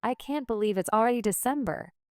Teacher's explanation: with stress on can't to express surprise